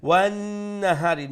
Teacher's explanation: نون مشدد واجب غنة أكمل غنة